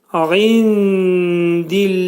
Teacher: Burunda deyiləcək. İndillahi kəlməsində ayn hərfinin məxrəci boğazın ortasından çıxarılacaq. Nun səsi, nun hərfi dələ yetişdikdə ixva olacaq.